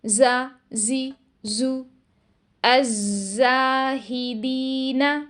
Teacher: زبان کے پچھلے حصے کو اپنی نیچرل پوزیشن میں رکھا جاتا ہے تاکہ سین اور زا کی آوازیں ہمیں لائٹ سنائی دیں